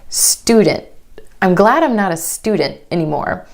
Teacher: Instead of student, student. My tongue stays up for the T sound after the N. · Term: held t, held T